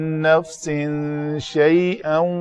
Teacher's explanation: اس تنوین کے بعد شین ہے حروف اخفاء میں سے، تو اس کا اخفاء کیا